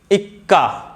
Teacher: और बलाघात क्या होता है कि जब हम किसी वर्ण पर विशेष बल देते हैं उसे हम लोग बलाघात कहते हैं। जैसे किसी संयुक्त व्यंजन से पहले हम लोग उसके पहले वाले वर्ण पर बल देते हैं